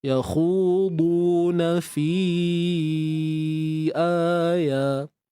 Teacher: Fi kena baca 4 harakat tuan-puan. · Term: mad jaiz munfasil